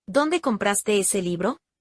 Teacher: Mi voz, el tono de voz va a ser descendente al final de la pregunta.